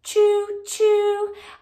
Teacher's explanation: Sometimes I like to say that it's exploding off the top of the mouth because we have to pull it down very quickly to make that chew sound.